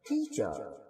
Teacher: یہاں پہ یہ ٹو سلیبل ورڈ ہوگا, ون نہیں ہے, ون اوپر والا. تو ٹیچر, ٹیچر جب ہم پڑھ رہے ہوتے ہیں تو ہلکی سی آواز نیچے جاتی ہے پھر اوپر آ جاتی ہے. تو بیسیکلی ہلکا سا گیپ آتا ہے, کوئی اتنا بڑا گیپ نہیں ہوتا, بالکل جسے ہم ہلکا سا فیل کر سکتے ہیں.